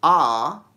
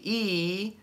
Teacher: if you say ah, your tongue is flat, and if you say e, your tongue kind of comes up in the back, like arches up in the back